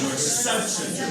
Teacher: Let's stress the word such.